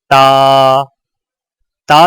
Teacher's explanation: تا کی ادائیگی میں زبان کی نوک کو سامنے والے اوپر کے 2 دانتوں کی جڑ سے لگا کر باریک آواز